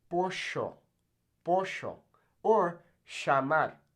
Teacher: in places like Argentina, they'll actually pronounce this kind of like a J. So they'll say pollo, or llamar.